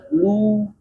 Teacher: ketika domah bibirnya bulat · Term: dhammah